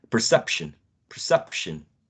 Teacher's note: Do we agree that the second syllable is the most salient of the three?